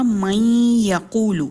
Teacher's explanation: تو نون کی ایک صفت ہے غنہ جو اس میں رہ رہی ہے